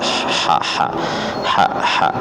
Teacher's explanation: Ha makhrajnya di pangkal tenggorokan. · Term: huruf ha kecil